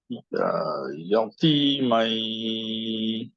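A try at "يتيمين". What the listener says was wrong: মাইন যখন বললা, নুনে তোমার আরেকটু মানে টাংটা একটু ঠিক থাকতে হবে, থামতে হবে ওই জায়গায়, হ্যাঁ। তোমার টাংটা কমপ্লিটলি টাচ করে নেই সুন্দর করে।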